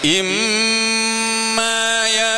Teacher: tutup bisa bunyi nunnya tidak bisa bunyi nunnya tidak bisa bunyi Kenapa karena Nun dengan mim itu huruf yang keluar dari hidung